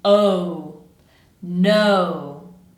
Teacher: Make sure you're pronouncing that diphthong, so I want to hear both o and u.